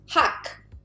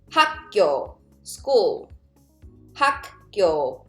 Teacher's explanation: They all sound like 기억, but as a final consonant, 기억 will sound like K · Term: K sound